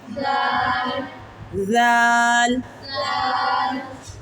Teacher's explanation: نرم حرف ہے، اس کی سیٹی نہیں نکالی جاتی، یہ نرمی سے پڑھا جاتا ہے۔